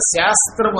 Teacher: నియమం అది అలాగే శాస్త్రము అనండి శ కి స కి తేడా ఉంది శ్రీరాముడిలో ఉన్న శ ని తాలవ్యము అంటారు తాలుతో పలకాలి